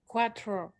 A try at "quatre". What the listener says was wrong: No, you say cuatro. That's Spanish. That's not in. That's not French. Quatre, quatre. say the proper way, like the way they teach it at school, you say quatre.